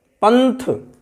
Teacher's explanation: पंथ, था है, था से पहले अनुस्वार है, तो अनुस्वार को जब हम ये पंथ शब्द को बोलेंगे तो ना की ध्वनि ही निकल रही है